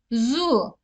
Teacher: zu kalın sesli ve yarı peltektir